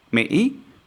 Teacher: Mỹ with the hiccup tone